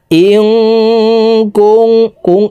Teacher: এখানে ইকফা গুন্না, নুন সেকেন্ডের পর ইকফার হরফ কাফ আসছে, এই কারণে এই নুন সেকেন্ডকে নাকের ভিতরে লুকাইয়া গুন্নার সহিত পড়ব